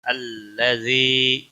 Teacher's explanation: الذی یا مدہ ہے، ایک الف کے برابر کھینچ کر پڑھیں گے